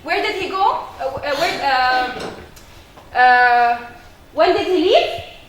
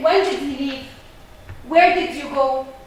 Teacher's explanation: All those questions are answered with a falling intonation pattern, not rising.